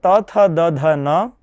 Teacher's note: જ્યારે શરીર અંતર સંચારી વાયુ દાંતને સ્પર્શીને અધિક માત્રામાં બહાર આવે છે ત્યારે તે વર્ણોનું ઉચ્ચારણ સ્થાન દંત ગણવામાં આવે છે